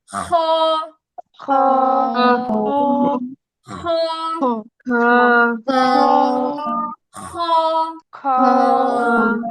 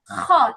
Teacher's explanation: আচ্ছা, এই খ এর উচ্চারণটা করার সময় আমাদের গলায় হচ্ছে গলার একদম কি বলে চিবুকের নিচের যে অংশটা সেখানে হচ্ছে একটু কেমন যেন খসখস আওয়াজ হবে। খ এরকম এরকম আওয়াজ হবে।